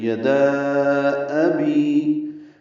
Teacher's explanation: حمزہ کی آواز اقصی حلق سے ادا ہوتی ہے۔ تو یدا ابی، واضح آوازیں دونوں ہونی چاہیے، الف کی اور حمزہ کی۔ · واضح آوازیں دونوں ہونی چاہیے، الف کی اور حمزہ کی۔ بی یا مدہ ہے، 2 حرکات لمبا ہے۔